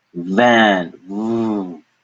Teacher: Your teeth are biting down in the middle of your lip. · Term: V sound